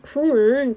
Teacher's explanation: 일단 맞죠. 비음화된 거니까 국 기역 받침에서 이응 받침으로 비음화, 즉 교체가 된 거 맞습니다